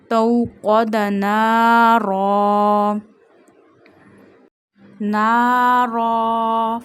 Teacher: Read qaf with a thick tone voice because this is a mustalia letter.